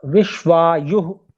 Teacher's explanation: यु के बाद में विसर्जनीय भी बोलना है।